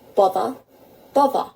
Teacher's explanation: sometimes the TH sound in the middle of words can turn into a V sound